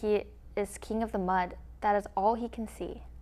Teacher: This poetic meter consists of 4 rhythmic units, or anapests, each composed of 2 weak syllables followed by 1 strong syllable. Often, the first weak syllable is omitted, or an additional weak syllable is added at the end. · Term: anapestic tetrameter